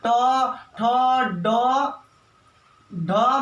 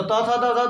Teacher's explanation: ट ठ ड ढ मूर्धन। तवर्ग बोलते हैं तो त थ द ध दंत